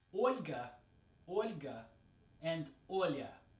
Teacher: we have a soft L, and in this short form, Olya, there's also a short, soft L sound